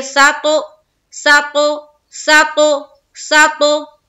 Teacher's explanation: सीन को ता से मिलाते हुए कलकला करेंगे, क्योंकि ता है जो हर्फ वो हुरूफे कलकला में से है, तो सीन को ता से मिलाएंगे।